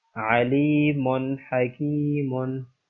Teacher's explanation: دو پیش یعنی جو تنوین ہے اس کے بعد حروف ہلکی میں سے ہا ہے، اس لیے یہاں پر بھی اظہار کا اصول لگے گا اور غنہ نہیں کریں گے